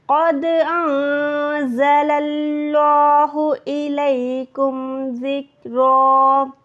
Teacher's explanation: قد انزل اللہ، نون ساکن کے بعد زا ہے، اکفا کریں گے، اللہ کے نام سے پہلے زبر ہے، موٹا حروف ادا کریں گے۔ قد انزل اللہ الیکم ذکرا، رن یعنی یہاں پر 2 زبر پہ رکے تو را ہو گیا، را موٹی ادا ہوگی، الیکم ذکرا، صحیح ہے۔